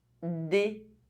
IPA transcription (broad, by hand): de